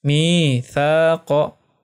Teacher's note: huruf mad ya sebelumnya berharokah kasroh. Ya, maka panjangnya 2 harokah. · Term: mad tabi'i